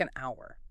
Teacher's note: Honest starts with a vowel sound even though the letter is H. Exactly. The H is silent, so it needs and an honest person.